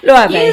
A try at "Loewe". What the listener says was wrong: Use your eyes. No, where's the A coming in? Yeah, not Loewe.